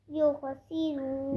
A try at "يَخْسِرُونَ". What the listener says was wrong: یخ خا کے بعد بھی آئی یخسرون.